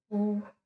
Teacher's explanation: तो ये क्या हो रहा है? एक तो आपका ओ होंठ से उत्पन्न हो रहा है, दूसरा आपका कंठ से भी इसकी ध्वनि उत्पन्न हो रही है।